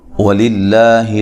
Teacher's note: للہ لفظ اللہ کا لام باریک پڑھا جائے گا کیونکہ اس سے پہلے والے حرف پر زیر ہے